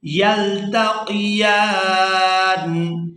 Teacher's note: یا کو کھڑی زبر کی وجہ سے کھینچتے ہوئے نون ساکن کے ساتھ ملائیں گے